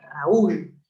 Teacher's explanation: como está en la cerrada U, es decir, la débil, a esto se le llama hiato acentual